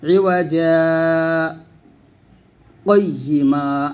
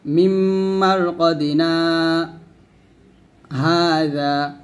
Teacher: দুটো শব্দ এক শ্বাসই পড়ব, কিন্তু মাঝখানে আমি একটু থেমে যাব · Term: সাক্তা